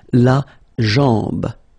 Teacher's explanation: A-M, when you combine these two, basically it's just like A-N, so it's nasal and it's en.